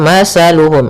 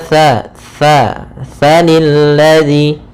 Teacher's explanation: makhrajnya yaitu dari ujung lidah kita, ujung lidah menempel dengan gigi seri atas. Sehingga ketika pelafalan tha, jangan sampai kita melafalkannya dengan masaluhum dengan huruf sin. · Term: huruf tha